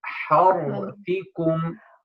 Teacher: But if you mean by takrar, as some scholars mean, which means the slight shivering of the ra that doesn't make it more than one ra, that's fine